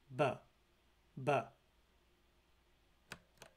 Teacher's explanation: there is also a voiced labial stop represented by the Latin letter B pronounced buh buh the latin letter capital d in klingon represents